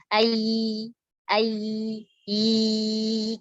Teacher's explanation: Kerasa kalian pegang tenggorokannya getar, bergetar. Tapi pas kalian taruh telapak tangan kalian depan mulut, gak ada rasa angin. Kalau kalian kerasa angin berarti salah kalian. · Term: huruf jahar